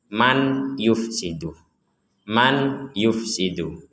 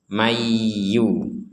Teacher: Di sini ada nun sukun bertemu ya. Kita membacanya mendengung. Jangan dibaca jelas ya. · Nah, karena nun ini kita gabung dengan ya. Maka nunnya ini dimasukkan huruf ya. Seakan-akan nunnya sudah tidak ada dan langsung masuk ke ya. Kita bacanya mayyu.